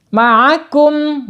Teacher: Ain karena ain itu sifatnya tawasud ya, tawasud bainiyah antara syiddah dan rahwah ya. Tidak mengalir sempurna dan tidak tertahan.